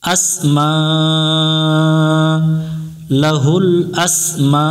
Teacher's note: মোটা চিহ্ন আছে, চার আলিফ টান দিয়ে পড়ব